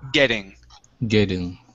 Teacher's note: switch that double T to a flap T.